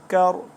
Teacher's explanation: کاف باریک ہے، را کو پر موٹا پڑھیں گے